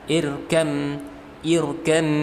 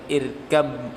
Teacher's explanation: Ya, irkabama itu nggak bisa. Jadi yang benar adalah ba-nya dileburkan ke dalam huruf mim. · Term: idgham mutajanisain